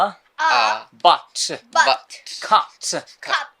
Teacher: অ, the next one, এরপরে আমরা যেটা দেখবো সেটা হলো আ। বলো আ, আ, একদম গলার ভেতর থেকে আ